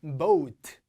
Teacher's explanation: 모음이 2개가 붙으면 소리가 기본적으로 길어집니다. 그리고 모음이 O에서 U 소리로 넘어가요.